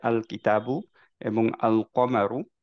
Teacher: আলটা কমপ্লিটলি ঠিকভাবে উচ্চারণ করলাম আল উচ্চারণ করলাম লামটাকে উচ্চারণ করলাম সেগুলোকে আমরা বলি হচ্ছে লুনার লেটারস ওকে